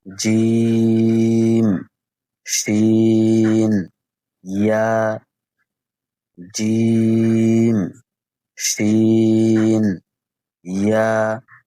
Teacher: জিহ্বার মধ্যখান তার বরাবর উপরের তালুর সঙ্গে লাগায়া